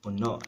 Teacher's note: notice again that glottal stop, that stress accent on the last vowel